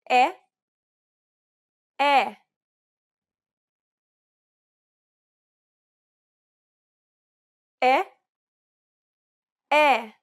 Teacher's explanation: identical to the e in set it's known as the open e sound in Portuguese